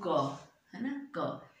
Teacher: क और क बोलने में कम प्राणवायु लगेगी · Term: अल्प प्राण